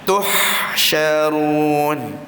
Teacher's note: Jadi dia bukakan huruf ha dengan sifat infitah.